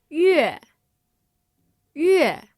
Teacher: just said that with the fourth tone, which is a falling tone.